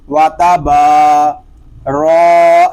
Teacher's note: را کو پر پڑھیں گے کیونکہ را کے اوپر زبر آ گیا ہے